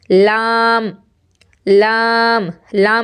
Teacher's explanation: जुबान का किनारा ऊपर के सामने वाले जो दांत हैं उन दांतों के मसूड़ों में टच होगा · तरफी कहलाता है तरफ का माना होता है साइड यानी किनारा तो लाम जो है व साइड से अदा होता है इसलिए इसको तरफी कहेंगे जुबान का किनारा और जवाहिर से सनाया तक के मसूड़ों से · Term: हुरूफ तरफिया